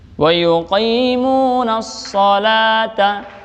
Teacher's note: Salata itu namanya mad tabi'i ya. Satu ayunan atau satu harakat.